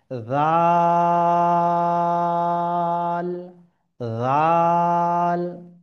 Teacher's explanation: তো জাল, তিন আলিফ বরাবর, হ্যাঁ, জাল, জাল, সামনের জিহ্বার একটু উপরের অংশ সামনের দাঁতে গিয়ে লাগবে। জাল, কোনো সিটি ছাড়াই কিন্তু শব্দটি অক্ষরটি উচ্চারিত হবে।